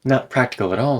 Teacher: the t turns into a glottal stop before a consonant and a tap before a vowel